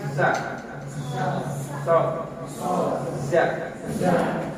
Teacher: Sa itu ada siulan kan, bersiul, berdesis. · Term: sopir